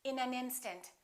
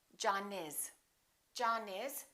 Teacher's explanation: we would connect the final consonant to the next vowel so this n and this a would be said together listen